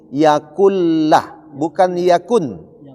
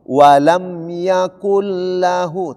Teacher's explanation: Nah, itu huruf idgham bila gunna, langsung masuk. Nun mati atau an in un itu langsung dilebur masuk kepada huruf ro dan la.